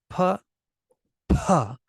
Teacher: a lot of air will come out of the P P's and B's with the aspiration